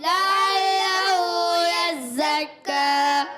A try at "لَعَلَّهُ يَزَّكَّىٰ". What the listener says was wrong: لام کو، پہلے والے لام کو کھینچنا نہیں ہے، دوسرے والے کو بھی نہیں کھینچنا. جی ہاں، مگر پہلے والا متحرک ہے، دوسرے والا مشدد ہے، اس کو ذرا رک کر پڑھنا ہے، یہ یاد رکھنا ہے.